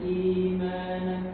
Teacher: I-nya 2 harokat saja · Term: mad badal